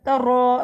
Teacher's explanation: رو، رو کو موٹا پڑھیں گے، رو پہ زبر ہے، رو کو اس طرح سے پڑھا جاتا ہے جیسے زبان وائبریٹ کرتی ہے، ر کی آواز آنی چاہیے